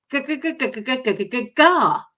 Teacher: It's like you're trying to lift and make your R sound with the back of your tongue going good. So I'm not using the front of my tongue. I'm actually using the kind of the back, and I've got that right up against my soft palate, in the bit between your soft palate and your hard palate